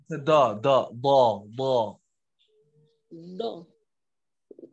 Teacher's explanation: Lidahnya ke samping, bukan ke ujung gigi.